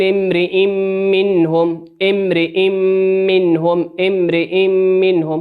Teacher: في امرئ منهم همزة عليها تنوين أتى بعدها حرف الميم، والميم من حروف الإدغام بغنة وتغن بمقدار حركة